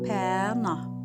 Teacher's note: Pənah sözündə P, Ə incə saitdir, nah sözündə A qalın saitdir. Deməli, qaydalara uyğun olaraq ilk hecası incə sait, son hecası qalın sait oldu.